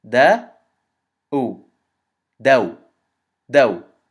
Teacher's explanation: when we add the waaw sukoon after it, we have to add a aw sound equivalent to one movement. So we say dal fatha and then waaw sukoon, da, u, daw, daw.